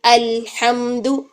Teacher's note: زبان کا کنارہ اور ادنیٰ حافہ اوپر دانتوں کے مسوڑوں کے ساتھ لگایا ہوا ہے، اس کو تھوڑی دیر درمیانے ٹائم کے لیے اس کو ٹھہرا کے رکھیں. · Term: لام